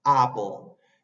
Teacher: Y esa E al revés que está entre la P y la L casi no se dice.